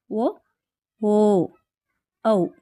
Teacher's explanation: ಕಂಠ ಮತ್ತು ಓಷ್ಠ್ಯ ಅಂದರೆ ತುಟಿಗಳ ಸಹಾಯದಿಂದ ಹುಟ್ಟುತ್ತವೆ ಅಂತಹ ಅಕ್ಷರಗಳು ಯಾವುವೆಂದರೆ ಸ್ವರಗಳಲ್ಲಿ ಬರುವಂತಹ ಓ ಓ ಔ ಈ ಮೂರು ಅಕ್ಷರಗಳು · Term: ಕಂಠೋಷ್ಟ್ಯ